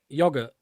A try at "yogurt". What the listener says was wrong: Why do you pronounce the H like that? Yogurt. you say weird. Yogurt. Yogurt. Not yogurt. Yogurt. Why do you pronounce the H?